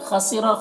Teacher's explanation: خسر خو کو پر پڑھیں گے، یہ حروف مستعلیہ میں سے ہے، را کو بھی پر پڑھیں گے۔